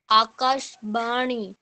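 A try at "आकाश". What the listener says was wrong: আকাশ বললে হবে না আকাশা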